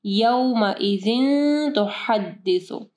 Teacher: اچھا یہاں پہ دیکھیں تنوین ہے، یعنی دو زیر ہے، اس کے بعد تا ہے، ٹھیک ہے. تا جو ہے وہ اخفا حروف میں سے ہے تو یہاں پہ اخفا غنہ ہوگا. تو حدث ہا کو واضح پڑھنا ہے، سا کے مخرج کا خیال رکھنا ہے.